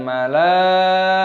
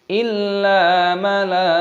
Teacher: Taknya di sini tak marbutoh, ketika berhenti maka berubah menjadi hak, dimatikan, bukan malaikatan.